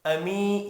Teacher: امی یا مدہ ہے، ایک الف کے برابر کھینچ کر پڑھیں گے